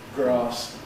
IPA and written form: grɑːs (grass)